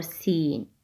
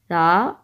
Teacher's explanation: سا اور سین کی آواز آپس میں ملانی نہیں ہے جی. سین میں وسلنگ ساؤنڈ ہے، سی ٹی کی آواز ہے، اور سا نرم حرف ہے